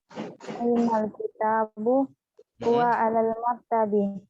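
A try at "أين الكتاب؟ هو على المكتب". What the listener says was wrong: Huwa alal maktabi. Ahsanti.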